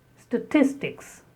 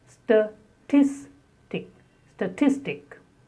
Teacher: Again the stress on the second syllable.